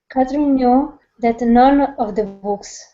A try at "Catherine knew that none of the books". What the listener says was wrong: Good job.